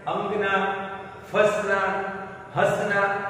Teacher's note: भले आपको लगे कि न का सर उच्चारण हो रहा है, पर ऐसा नहीं है। यहाँ स्वर को भार देकर, जैसे मुंह से और नाक से दोनों की सहायता से बोला जाता है, इसीलिए यहाँ चंद्रबिंदी है। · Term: अनुनासिक